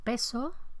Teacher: con debilitamiento y aspiración de la s